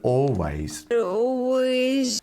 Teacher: with her accent you can't really hear the l sound